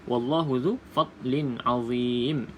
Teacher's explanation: Tanwin bertemu dengan huruf ain. Ain ni berada dalam kategori huruf yang keluar pada halkum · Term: izhar halki